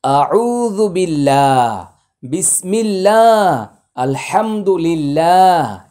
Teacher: আল্লাহ শব্দের পূর্বে জের থাকলে আল্লাহ শব্দের লাম এবং আল্লাহ শব্দের উচ্চারণ পাতলা হবে